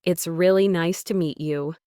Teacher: nice to meet you often flows together, almost sounding like nice to meet ya.